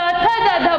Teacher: जब हम त, थ, द, ध बोलते हैं तो हमारी जीभ दांत को टच करती है